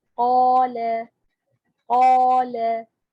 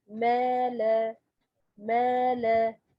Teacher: Here, this qaf is heavy letter followed by alif. This alif, the sound of this alif must be heavy as qaf letter.